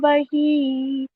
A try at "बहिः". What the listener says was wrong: பஹிஹி அங்க விசர்க பதம்.